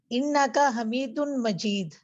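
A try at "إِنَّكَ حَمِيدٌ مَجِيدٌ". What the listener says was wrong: जी, इन्ना का, जी बिल्कुल, इन्ना का हमीदुम मजीद। अब दाल और मीम को मिला के पढ़ देते हैं ना।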